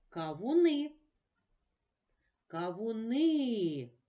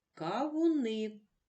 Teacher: кавуни наголошений голосний и але звук а ми чуємо чітко